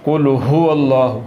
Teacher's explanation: تو اس لفظ کو پڑھتے ہوئے حلق کے نیچے والے حصے سے ہا کو نکالنا ہے۔ قل هو اللہ، ہو پڑھنا ہے، ہو اگر پڑھیں گے یعنی کہ اس ہا کے ساتھ پڑھیں گے جس کا مخرج حلق کے درمیان والا حصہ ہے تو پھر یہ لفظ غلط ہو جائے گا۔